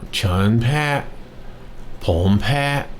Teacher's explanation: They're actually the same. On chan, it's a rising, and on pom, it's a rising. And then, of course, pat is the same on each high tone.